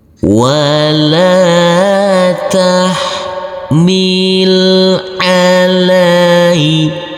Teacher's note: huruf lam yang berfathah a bertemu dengan huruf Ya Sukun maka kita lembutkan karena di sini adalah bacaan laayin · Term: bacaan layin